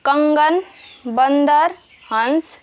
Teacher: अनुस्वार वाले शब्दों के उच्चारण में हवा नाक से बाहर निकलती है